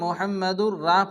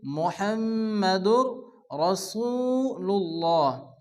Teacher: অনেকে আছে মুহাম্মাদুর রা পড়ে, রা পড়া যাবে না। আরবিতে 8টি অক্ষরের উপরে জবর আসলে অকার উচ্চারণ হয়, এর মধ্যে র একটি অক্ষর। এজন্য এখানে পড়তে হবে মুহাম্মাদুর রাসূলুল্লাহ।